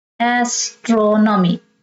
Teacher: Stress the third syllable from the end.